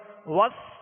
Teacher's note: اور ربی را پر زبر ہے, پر پڑھیں گے, اور با پر تشدید ہے, جمعوں کے ساتھ دوہرا پڑھیں گے. وس سین کو سختی کے سیٹی کی آواز میں اور باریک پڑھیں گے.